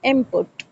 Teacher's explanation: often becomes M before bilabial P, so it sounds like input.